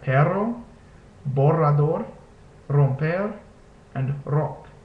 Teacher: which is the Spanish ER which is a rolled or a trilled r · At the beginning of the word, the Spanish R sounds more like this letter, which is the Spanish R, which is a rolled or a trilled R.